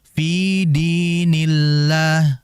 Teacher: kalau huruf sebelum lafzul jalalah kasrah seperti dinillah maka dibaca tipis